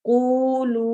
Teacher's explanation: واو ساکن سے پہلے والے حرف پر ضمہ آئے تو ہم اس واو ساکن کو 2 حرکت لمبا کر کے پڑھتے ہیں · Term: واو مدہ